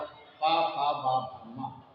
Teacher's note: पा फा भा भा मा, ये ओठ से बोली जाती है, इसलिए इसको बोलते हैं ओठ।